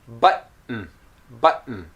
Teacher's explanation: top of the mouth okay to pronounce the T and then after the T there's no vowel and you go directly to pronouncing the N sound · my tongue did not release so it's an unreleased T and because when you pronounce a t the tip of your · If I say it very slowly, I'll say button, button. So my tongue did not release. So it's an unreleased T.